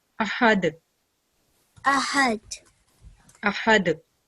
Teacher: So if there's sukoon present on dal, we produce a jerking sound.